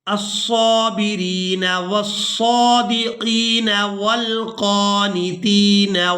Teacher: या साकिन हो और उससे पहले वाले हरफ के नीचे अगर ज़ेर हो तो वो या मद्दा होती है और उसके साथ जिस भी हरफ को मिलाएंगे उसे हम खींच कर अदा करेंगे। यहाँ पर हम रा को इस या मद्दा की वजह से खींच कर अदा करेंगे